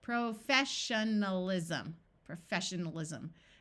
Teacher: Remember that the suffix al schwas